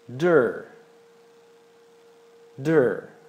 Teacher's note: os britânicos falam mais de, mas os americanos falam mais der